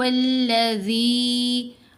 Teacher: پھر ذال کے نیچے زیر ہے، ساتھ یا ساکن ہے. ذال کو نرم بھی پڑھنا ہے اور 2 حرکات کی مقدار لمبا بھی کرنا ہے. لمبا کیا اس مدہ لیٹر کی وجہ سے. · ہا کو گلے کے بالکل نیچے والے حصے سے ادا کریں گے، چیسٹ والی سائڈ سے ہا. پھر ذال کے نیچے زیر ہے، ساتھ یا ساکن ہے.